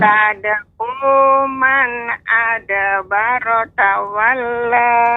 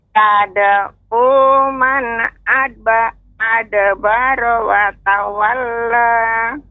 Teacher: tadi tertinggal pengucapan huruf wawnya.